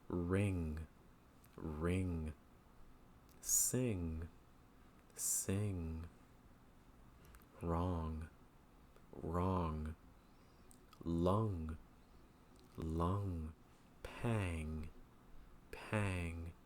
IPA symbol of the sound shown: ŋ